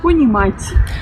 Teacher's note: Ça veut dire qu'après le T, il y a cette espèce de petit B pour signifier que c'est un T dit mouillé, comme par exemple dans le mot français tien. Voilà, la sonorité que vous avez dans le T, dans le mot tien, c'est la même que dans ponimat.